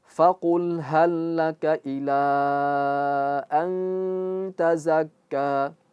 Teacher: Intinya ikhfa itu harus dia masuk ke ke hidung, tidak boleh lepas. · Nun mati bertemu dengan ta, dia jadi ikhfa, samar-samar. Dan harus khasyum. Dia harus masuk ke hidung. Enggak boleh mengikuti huruf ta, yaitu tidak khasyum.